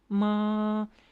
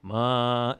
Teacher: that's what's going to convey that it's first tone, the fact that it's steady and it doesn't change